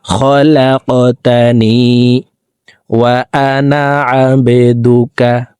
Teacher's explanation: কফ কলকলার হরফ উপরের দিকে ধাবিত করে ধাক্কা দিয়ে উচ্চারণ করব